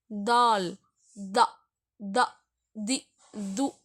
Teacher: தால் த தி து அப்படின்னு சொல்லும்போது ரெண்டு பல்லுக்கு நடுவுல சொல்லுவோம்